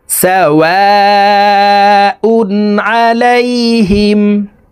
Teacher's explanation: ওয়াও এখানে চার আলিফ টেনে পড়তে হবে, মদের হরফের উপরে মোটা চিহ্ন বা মে হামজা মধ্যে মুত্তাসিল চার আলিফ টানিয়া পড়িতে হয়।